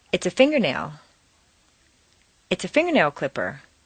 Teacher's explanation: Combine 3 things: finger plus nail plus clipper. Leave the stress on the first word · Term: 3-word set phrase